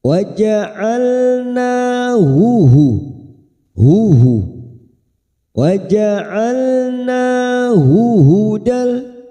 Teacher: dua huruf Ha ini makhrajnya ada di bawah tenggorokan yang membutuhkan tenaga pada saat membaca dua huruf ini